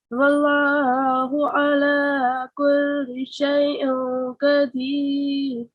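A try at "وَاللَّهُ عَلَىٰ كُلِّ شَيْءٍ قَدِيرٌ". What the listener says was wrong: And again, it's about your ayn sounds. Yeah. So practice all your ayn sounds. It will be wallahu ala kulli shay'in qadir.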